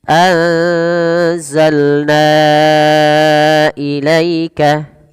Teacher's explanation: pada lafalna wajib kita panjangkan sepanjang empat atau lima harakat Kenapa karena Ia merupakan bacaan yang kita namakan dengan Mad Jaiz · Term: Mad Jaiz munfasil